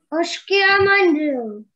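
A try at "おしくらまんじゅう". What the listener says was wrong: Не кю, а к. Ошикра.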